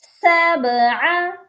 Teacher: عین کی آواز بھی حلق سے آئے گی